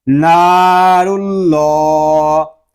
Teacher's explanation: اللہ پاک کا لام جو ہے اس کو بھی ہم پر پڑھیں گے کیونکہ اللہ پاک کے لام سے پہلے حرف پر پیش آ گیا ہے